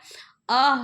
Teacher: अ ह्रस्व अर्ध विवृत मध्य स्वर है।